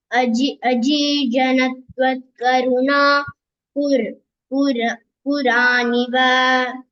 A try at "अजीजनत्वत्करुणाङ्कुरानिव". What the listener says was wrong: Karunankura. Ankura is that sprout. So don't split Kuraniva. Karunankuran. Karunankura. Karuna, compassion. Ankura, sprout. Karunankura, sprout of compassion.